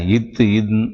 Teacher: இத் இன் மேல்வாய் பல்லின் அடியை அதாவது மேல்வாய் பல்லின் அடிப்பகுதி மேல்வாய் பல்லின் அடியை நாக்கின் நுனி பொருந்துவதால் பிறக்கின்றன